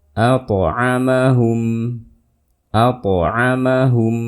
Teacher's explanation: To sukun sebelumnya fathah. Dikolkolkan suaranya, dipantulkan.